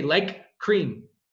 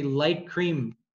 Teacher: You don't pronounce that K twice.